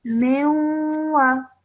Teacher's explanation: Meme with a kasra followed by a noon sakin and then a waw mushaddad. So that means when you join the meme to the waw, you have to produce a nasal sound in between for 2 seconds.